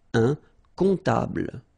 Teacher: And then, strangely, this P is not pronounced.